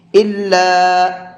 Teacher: چھوٹا مد ہے، اس کو 1 سے 3 الف کے برابر کھینچ کر کے پڑھیں گے